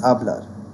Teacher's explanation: So what happens is, words ending in a consonant in Spanish are stressed on the final syllable. So in the word hablar, the stress is going to be on the last syllable